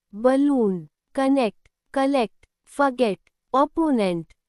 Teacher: in unstressed syllables, O becomes weak, soft and light, not full O or A. It sounds like A or schwar.